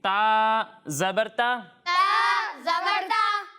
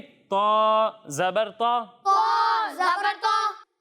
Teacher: جب ہم تا کی ادائیگی کریں گے تو اسے باریک پڑھیں گے. کس طرح پڑھیں گے؟ باریک. اور جب ہم طا کی ادائیگی کریں گے تو اسے موٹا پڑھیں گے